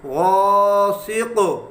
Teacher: غا حروف مستعلیہ، سین زیر سی، قاف دو زیر قن، غاسقن، جب وقف کریں گے تو کاف پہ قلقلہ کریں گے